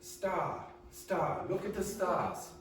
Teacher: In England, they will not pronounce R at the end of syllables.